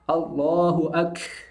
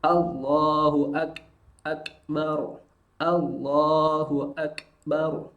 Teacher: Sedangkan huruf kaf mengalir tapi hanya berupa percikan nafas. Maka bunyinya adalah bunyi sukunnya. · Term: kaf sukun